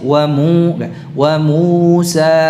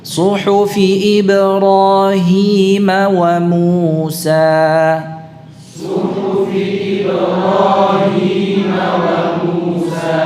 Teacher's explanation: Ya, masih wa Musa. Jadi dimurnikan pengucapan huruf matnya, tidak ada dengungnya. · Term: mad